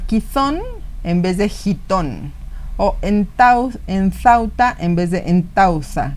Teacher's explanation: La primera, que era sorda, aparece aspirada, y la segunda, que era la aspirada, aparece sorda. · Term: metátesis aspiratoria